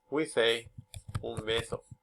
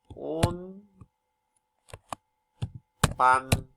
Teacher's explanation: It says, in Spanish, voice alveolar nasal consonants become bilabial before bilabial stops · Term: bilabial assimilation